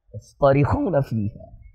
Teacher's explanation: اس پورے لفظ میں سارے کے سارے حروف مفخمہ ہیں، کوئی بھی مرققہ نہیں ہے ، صاد طا خا را، دیکھ رہے ہو کوئی بھی مرقق